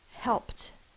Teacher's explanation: Because it's an unvoiced consonant, the ED is going to be said with just the T sound.